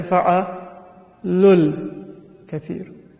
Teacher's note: The waw will not be pronounced, but it will be written. In English we can say that the long vowel will convert to a short vowel.